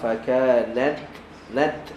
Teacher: kita keluarkan angin ketika lidah kita berada dekat makhraj ta. Jangan larikan dia daripada makhraj ta. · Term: hams